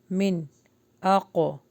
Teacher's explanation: قلقلہ ہو رہا ہے کیونکہ قاف کے اوپر جزم ہے